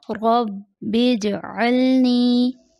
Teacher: جیم حرف قلقلہ میں سے ہے، جیم کی آواز پلٹائی جائے گی. عموماً جیم کی آواز پلٹائی نہیں جاتی.